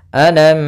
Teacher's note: karena di sini ada hukum tajwid berupa izhar syafawi yang mana mimnya harus dibaca dengan jelas tidak boleh ditahan